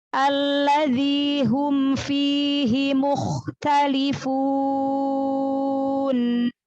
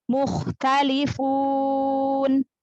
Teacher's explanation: Nun sukun karena waqaf, kasih sifat bainiyah nun sukunnya di akhir bacaan